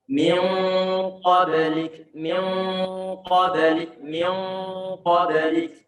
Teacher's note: Baca ikhfa dari segi ketebalan ataupun ketipisannya itu tergantung huruf yang datang setelahnya. Kalau huruf yang datang setelahnya itu adalah huruf isti'la termasuk huruf qaf, maka ikhfanya perlu kita buat tebal.